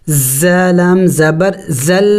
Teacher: تو ہم نے یہاں پہ حمزہ زبر آگے دیکھیں زا ہے، زا سیٹی والے حروف میں سے ہے، سیٹی والے حروف کل 3 ہیں، سین، صاد، زا، یعنی ان کو پڑھتے وقت منہ سے سیٹی کی آواز نکلنی چاہیے